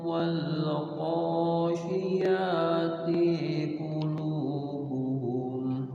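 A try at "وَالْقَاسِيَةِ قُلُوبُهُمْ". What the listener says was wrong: hati-hati ya sama ti pendek. Wal qasiyati qulubuhum langsung.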